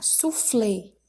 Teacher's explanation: a sílaba tônica lê e ela é uma oxítona · Letra A, soufflé. Então, a sílaba tônica é flé e ela é uma oxítona, já que é a última sílaba